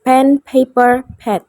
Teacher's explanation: Untuk pelafalan fonetiknya konsonan, tempat artikulasinya bilabial seperti kedua bibir. Cara artikulasinya plosive atau stop. Aliran udara ditahan dulu lalu dilepas. Untuk voicingnya voiceless, tidak ada getaran pita suara. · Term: bunyi peh